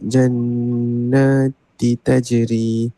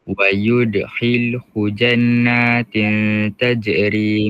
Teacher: Tanwin tu dia bertemu tak ikhfa hakiki. Kena dengung dua harakat.